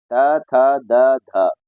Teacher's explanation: इन सभी का उच्चारण दांतों से किया जाता है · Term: दंत्याः